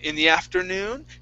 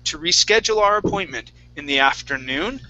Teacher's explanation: So I raise on noon only.